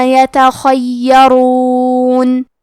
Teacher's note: خاء کی ادائیگی حلق کے اوپر والے حصے سے ہے. خاء حروف التفخیم میں سے ہے تو ہم یہ حرف کو موٹی آواز میں پڑھیں گے.